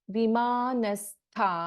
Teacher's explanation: ವಿಮಾನಸ್ಥ ಥ is A ಮಹಾಪ್ರಾಣ